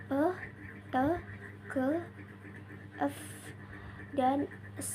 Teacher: bunyi tak bersuara tanpa adanya getaran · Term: voiceless sounds